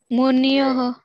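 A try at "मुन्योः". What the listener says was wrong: Not munyo. Na plus yo. Nyo. Munyoho. That much you have to pay attention.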